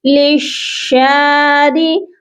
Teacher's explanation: را کو آپ نے باریک پڑھنا ہے کیونکہ را جو ہے زیر کے ساتھ باریک پڑھی جاتی ہے